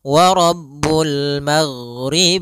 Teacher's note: karena huruf ghain tidak ada sifat qalqalah, tidak ada sifat pantulan · ghain adalah sifatnya rokhawah. Rokhawah itu mengalirnya suara